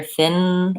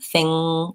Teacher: I should be able to hear thin, I'm sealing off in the front, and thing, I'm sealing off in the back.